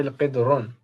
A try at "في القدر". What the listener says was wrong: القدر. See, with alif lam there is no tanween. So في القدر. ہاں زیر آتی ہے آخر میں.